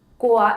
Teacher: Au is a glide which appears for combining two vowels, o plus a.